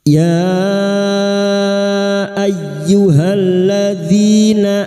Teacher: Mad jaiz munfasil hukmi. Lima harakat kita panjangkan.